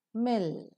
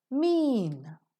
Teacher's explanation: term label mer as in mil is voiced vocal cords vibrate bilabial both the lips are involved in closing the oral cavity and nasal because the air escapes through the nose